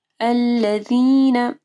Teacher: الذین، ذال کے مخرج کا خیال رکھنا ہے۔ جب آپ ذال پڑھیں گے تو آپ کی زبان کی نوک اوپر کے دو دانتوں کے پاس آئے گی